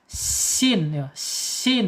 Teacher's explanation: Di sin sini secara makhraj ada di al-lisan. Ya, ujung lidahnya menyentuh gigi seri bawah ya. Ke bawahin tuh.